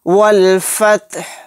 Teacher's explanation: ہا کو ساکن بنا کر پڑھیں گے آیت کرنے کی صورت میں۔ والفتح، اس طرح سے سانس توڑنا ہے۔